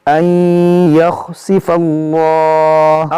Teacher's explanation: اس میں جلال سے پہلے زبر ہے، اس کو موٹا پڑھیں گے